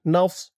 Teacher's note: নসরুনা নফস নুন দিয়ে সদ ধরবে, নফস নাস বলা যাবে না, নাস বললে কিন্তু এই সদের জায়গায় সিনের উচ্চারণ হয়ে যাবে।